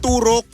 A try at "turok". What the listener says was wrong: Wala yung stress sa first syllable.